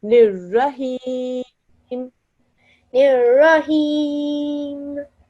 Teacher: Okay, so what you're doing is when you're making the meme sound, you're opening your lips again. Don't. Just close your lips and stop the air.